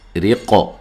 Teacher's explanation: را کو باریک پڑھنا ہے، را کے نیچے زیر ہے، اور وقف کی صورت میں قاف پر جو قلقلہ ہے اس کو واضح کرنا ہے، ہلا کر پڑھنا ہے، ٹھیک ہے۔